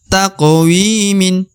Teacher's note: huruf Wi dibaca Dua harakat kenapa Karena di depannya terdapat ya sukun atau ya mati